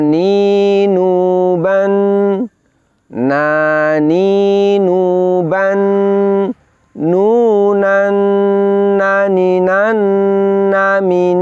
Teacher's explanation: karena suaranya ternyata keluarnya melalui pangkal hidung maka muncullah sifat berikutnya yang disebut dengan guna atau dengung jadi diantara sifatnya huruf nun adalah dari segi nafas nafasnya tertahan · ujung lidah menempel pada gusi gigi seri atas itulah mahroj dari huruf nun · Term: makhroj huruf nun